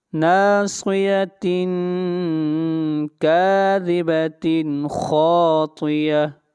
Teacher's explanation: کاذبۃ کے اوپر تنوین کے بعد خا آ رہا ہے اور خا حروف حلقی میں سے ہے، اس لیے اظہار کریں گے